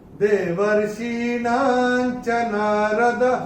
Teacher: चरण की समाप्ति पे जब विसर्ग आता है तो उसका उच्चारण केवल और केवल ह ही होता है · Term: विसर्ग का उच्चारण